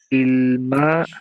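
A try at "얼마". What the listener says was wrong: না আ এটা আ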